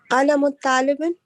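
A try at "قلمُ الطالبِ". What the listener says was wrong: Why are you reading talibin when there's alif lam on the next one? Yeah, it should not have a tanween. It should have one kasra. So it'd be kalamut talibi.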